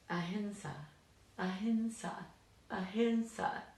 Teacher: we have to get used to that full nasal sound